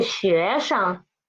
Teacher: 生 is the neutral tone. We should read as soft and quick.